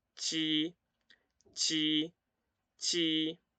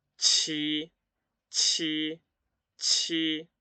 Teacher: la diferencia dónde va a estar entre la J y la Q es que la J va a ser sin aire y la Q va a ser con aire. La superficie de la lengua, ¿sí?, va a estar en el paladar duro, ¿sí?